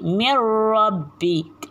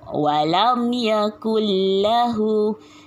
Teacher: Idgham bila gunnah ni bila maksudnya tanpa dengung. Jadi nun mati dimasukkan dalam huruf lam tanpa dengung